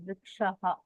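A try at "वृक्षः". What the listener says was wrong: You're saying kaha there.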